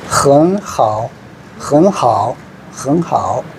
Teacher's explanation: 삼성이 연결돼가 나오면은 앞에 삼성은 다시 이성으로 읽어줍니다.